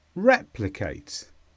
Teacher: this is a verb and the stress is on the word re